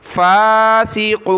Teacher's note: फा के ऊपर खड़ा ज़बर एक अलिफ की लिमिट में इसको खींचेंगे